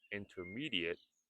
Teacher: Notice I said intermediate and not intermediate. The T sound is silent.